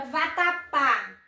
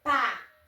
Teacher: Qual é a sílaba mais forte? Pá, que é a última sílaba. Então, ela é oxítona. Termina em uma dessas terminações aqui, que as oxítonas exigem acentuação, termina em A.